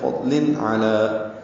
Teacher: تنوین کے بعد عین آنے کی وجہ سے اظہار حلقی ہے. فضل علی، علی میں عین وسط حلق سے ادا ہوگا